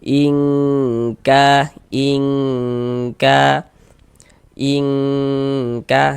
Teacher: Jadi ini kita baca ing. Kemudian di bagian ing-nya tuh suaranya itu kita tahan. Kita panjangkan sejenak ya. Kita tahan ya kira-kira sepanjang dua harakat. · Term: ikhfa hakiki ab'ad